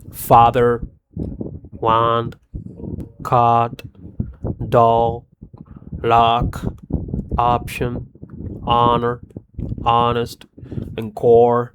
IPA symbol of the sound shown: ɑ